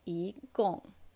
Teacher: Remember when it's with the fourth tone, I changes to second tone.